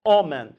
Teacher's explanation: Normalmente faz um ditongo nasal. Homem. Aparece esse I.